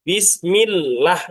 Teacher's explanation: lam lafaz Allah wajib tarqiq atau wajib tipis. Jadi bacanya Bismillah, jangan Bismillah.